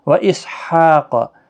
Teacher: قاف حروف مستعلیہ ہے، پر پڑھنا ہے